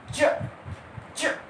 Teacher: अब चावर्ग आप लोग देखिए, बोल के देखिए, च, छ, ज, झ, व, च, छ, यानी दो चीज आपस में संघर्ष यानी आपस में टच हुई, एकदम हटी, और जो वायु निकलती एकदम घर्षित करते हुए, जैसे च, च, देखिए जीभ और तालु आपस में टच हुए और एकदम से टच हुए और हट गए, और उसके बाद वायु एकदम घर्षित करते हुए निकलती है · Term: स्पर्श संघर्षी व्यंजन